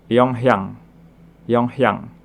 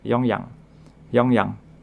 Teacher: Kalau dibaca cepat, kadang orang membacanya hiatnya hampir hilang